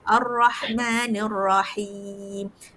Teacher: Itu pun dia panggil lahan khafi lah, dia tidak membatalkan solat. Cuma yang dari segi sebutan makhraj yang betul untuk ra tu, dia akan ada sedikit getaran, dia panggil Ar-Rahmanir-Rahim.